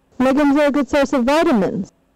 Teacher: the new information is vitamins hence the main rise fall is on vitamins